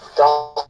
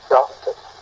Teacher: le R n'apparaît pas lorsque nous prononcions